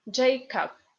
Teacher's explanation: B in the end of the word becomes p according to Russian phonetic rules. And O, unstressed, as you already know, is A.